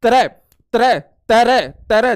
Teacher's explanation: त्र का आप उच्चारण करोगे तो आपको दो धवनी सुनाई देगी त और र की